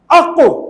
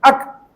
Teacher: قاف کہاں سے نکلے گا؟ زبان کی جڑ تالو کے نرم حصے سے، قاف. اور چھوٹا کاف کہاں سے نکلے گا؟ زبان کی جڑ تالو کے سخت حصے سے. جیسے ایک تو ہے اق اور ایک ہے اک، اس میں بھی کاف آ رہا ہے، اس میں بھی، مگر اس میں پہلے والے میں بڑا کاف ہے، اق، اس میں اک.